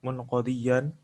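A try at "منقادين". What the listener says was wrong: Munqadina bukan dian, munqadina li amrihi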